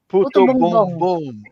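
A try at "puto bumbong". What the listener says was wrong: Bong bong, not boom boom. bong Not boom boom. Puto bongbong.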